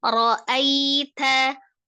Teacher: Ra'ai ya, ra-nya tebal berbaris fathah.